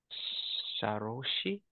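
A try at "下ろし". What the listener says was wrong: It's that can be read as sa, like in sagaru. However, this is o orosu.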